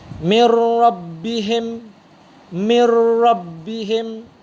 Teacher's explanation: menggabungkan bunyi Nun dengan huruf serta seterusnya tanpa dengung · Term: Idgham bilagunnah